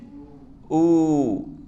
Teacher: جیسے حمزہ واو پیش او، تو یہ او جو ہے واو ہم نے کھینچ لیا، یہاں پر ہم نے مد کیا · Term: واو مدہ